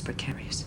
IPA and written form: prɪˈkeə.ri.əs (Precarious)